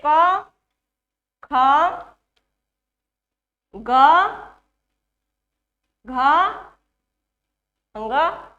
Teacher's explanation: क वर्ग को कंठ से उच्चारण करते हैं